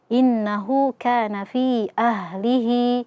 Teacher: Ada huruf mad setelahnya ada hamzah tapi tidak dalam satu kata. Maka di sini hukumnya adalah mad jaiz munfasil. Ya, dibaca 4 sampai 5 harakat.